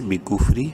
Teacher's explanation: را زیر ری، بی کفری، را کو باریک پڑھیں گے زیر کی وجہ سے